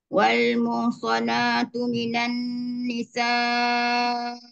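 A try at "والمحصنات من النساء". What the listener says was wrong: Nisa tu yang panjang. Tu panjang tu. Minan nisa'il.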